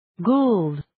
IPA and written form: guːld (Gould)